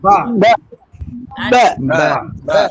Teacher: ঠোঁটের শুকনা স্থান থেকে আদায় করা যাবে না, অর্থাৎ বায়ের মাখরাজ হচ্ছে দুই ঠোঁটের ভিজা অংশ, এখানে শুকনা স্থান থেকে আদায় করা যাবে না।